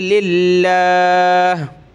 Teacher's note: لفظ اللہ سے پہلے لام پہ زیر ہے تو پتلا کریں گے